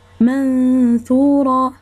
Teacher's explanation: ولا كان الحرف اللي من ورا النون ساكنة والتنوين حرف مرقق يعني مستفل، كنديروا الغنة رقيقة شي شوية. بحال مثلا منثورة، هنا الثاء حرف من حروف مستفيل يعني ماشي مفخم، يعني مرقق شي شوية، الغنة كتكون مرققة.